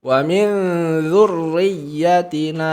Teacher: RO di sini tasdidnya berharakat kasrah maka sempurna tipis